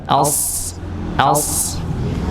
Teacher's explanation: shad itu sama seperti sin, cuma bedanya pangkal lidahnya diangkat untuk menebalkan.